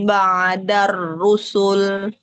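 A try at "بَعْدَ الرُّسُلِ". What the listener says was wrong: Ba'da dalnya majukan lagi depan.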